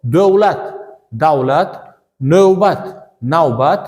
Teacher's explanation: O deb emas av deb talaffuz qilinadi. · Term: diftong